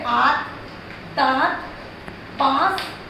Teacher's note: चंद्रबिंदु में नाक से ज्यादा सांस लेते हैं मुंह से कम, जैसे आंख दांत पांच।